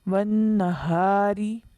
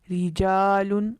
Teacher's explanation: پہلی صورت ہے را کے نیچے زیر یا 2 زیر ہو، جیسا کہ والنہاری، را کے نیچے زیر، رجال، را کے نیچے زیر باریک پڑھیں گے